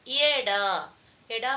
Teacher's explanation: more ಎ this one is ಎ this one is ಡ ಎ ಡ ಅಲ್ಪಪ್ರಾಣ ನಾಟ್ ಮಹಾಪ್ರಾಣ